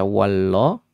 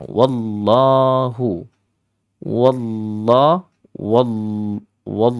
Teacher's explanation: maka dihukumi lam yang taglid lam yang tebal dan adik-adik bacanya dengan cara yang memenuhi rongga aljauf rongga-rongga mulut